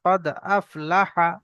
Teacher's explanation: লামটা টান হয়ে যাচ্ছে, লামটা টান হবে না।